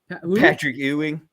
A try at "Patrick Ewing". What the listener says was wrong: Sounds like you're saying you.